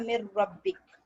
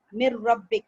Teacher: नून drop हो गया और डायरेक्ट रॉ पे आ गया, नून मिल गया रॉ में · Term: इदगाम